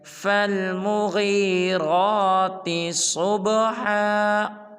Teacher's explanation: صبح کی صاد کو پر ادا کریں گے، یعنی کہ موٹا ادا کریں گے، اور با کو قلقلہ کریں گے